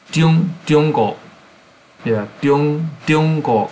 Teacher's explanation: So it starts with a D, diong-go, instead of zh.